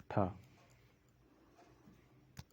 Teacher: मूर्धन्य महाप्राण अघोष व्यंजन वर्ण का उदाहरण है